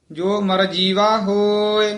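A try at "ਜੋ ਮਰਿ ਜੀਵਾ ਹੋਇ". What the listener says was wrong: ਜੋ ਮਰ ਜੀਵਾ ਹੋਏ, ਮਰਜੀਵਾ ਇਕੱਠਾ ਨਹੀਂ ਕਹਿਣਾ, ਜੋ ਮਰ ਜੀਵਾ ਹੋਏ।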